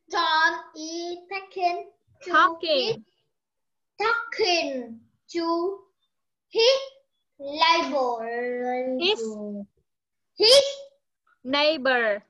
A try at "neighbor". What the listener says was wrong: Không phải ồ. Neighbor, âm ơ. Talking nó khác với taking nha.